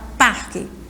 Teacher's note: o parque é o pa certo é a sílaba mais forte e aí ela é a penúltima sílaba